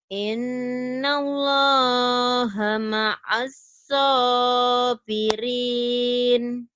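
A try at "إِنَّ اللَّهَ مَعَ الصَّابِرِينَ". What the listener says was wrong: Ainnya belum keluar. Innallaha ma'as ain. Innallaha ma'as sabirin.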